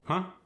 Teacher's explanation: there's a rise at the end, as if you're asking a question. Huh? It's slightly monotone with subtle rises and falls.